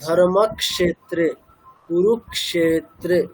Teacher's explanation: মানে কটা রিপিট হচ্ছে যুক্তাক্ষরের প্রথম অক্ষরটা রিপিট হচ্ছে